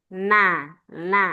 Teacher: Yang pertama nun tadi ujung lidah kena ujung langit-langit atas